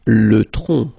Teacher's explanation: final C is not pronounced here